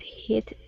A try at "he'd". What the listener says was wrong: now instead of hit it would be he heed there you go